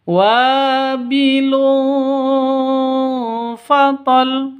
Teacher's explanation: tanwin bertemu dengan fa. Cara bacanya samar didengungkan. Siap-siap ke huruf fanya karena bacaan ikhfa haki ikhfa hakiki.